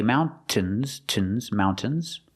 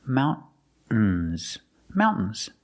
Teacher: Or you can use a stop T and say mountains. Use a stop T, mount, and then you fall to the N.